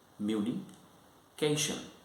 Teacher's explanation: So it has got three syllables: communication, and you will notice here that the stress is on the third syllable of this word